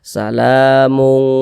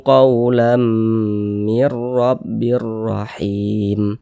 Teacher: Jadi pada bagian mung, kita menahan suara tersebut dan memperpanjangnya sejenak. Baiklah, sekitar dua harakat. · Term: ikhfa